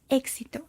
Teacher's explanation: es un sonido compuesto por la k y la s como nuestra equis